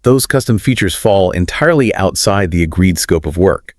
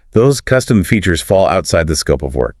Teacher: That downward inflection is the audio signature of a firm boundary.